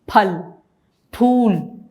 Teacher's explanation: फ दांतों में से हवा नहीं निकलनी है, बल्कि ओष्ठ पूरा बंद होकर के फ बोला जाता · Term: ओष्ठ्य वर्ण